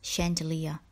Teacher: Although this word starts with the ch sound, it is pronounced with the sh sound.